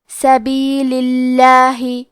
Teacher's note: لفظ الجلالہ کے لام کا حکم ہے ترقیق تو ہم حرف اللام کو پتلی آواز میں پڑھیں گے